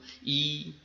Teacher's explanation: লক্ষ্য করে দেখো ই যখন হলো তোমার ঠোঁট দুটো ছড়িয়ে গেল দুপাশে